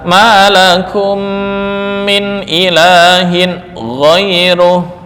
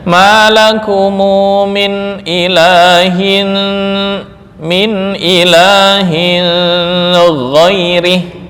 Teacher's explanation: Tanwin bertemu dengan gin menurut Abu Jafar dibaca dengan ikhfa. Jadi bacanya maumu min ilahin min ilahin girih ya dibaca dengung ya.